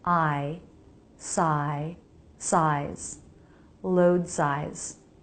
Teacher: Then the I diphthong, jaw drop, then the tongue arching towards the roof of the mouth.